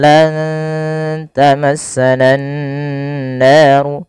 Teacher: nunnya diwarnai dengan warna hijau karena ia bacaan ikhfa yang di mana menyamarkan langsung kepada makhraj daripada huruf ta yang di mana makhrajnya adalah ujung ujung lidah kita menempelkan dengan ee perbatasan antara gigi dari atas dan gusinya.